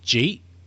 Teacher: you can turn the words did you eat into one syllable